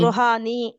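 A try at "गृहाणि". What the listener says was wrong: नी नहीं होगा, ण होगा। वाई? It has a half र, गुरुहम।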